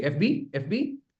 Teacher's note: So very quickly you say FB FBI I put stress on the last letter.